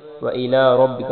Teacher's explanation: را کو موٹا پڑھیں گے اور با کے ساتھ را کو ملائیں گے. کاف کو بریک پڑھیں گے